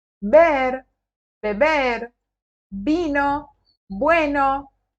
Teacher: com v ou com b não tem diferença na pronúncia é exatamente igual